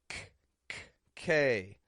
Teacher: Made in the back of the mouth, the back of the tongue rises up, touches the soft palate, builds up air, and then bursts it out.